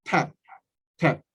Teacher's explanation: 이거는 P 소리가 나잖아요. 이거는 모음, 자음 사이에 모음이 하나 있죠? 단모음 A죠. 그러면 에 소리가 나죠. 에. 그냥 그대로 읽으면 돼요.